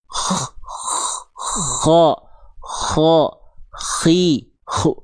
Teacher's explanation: Sehingga ketika kita lafalkan rasakan di sini ditenggorokkan bagian terluar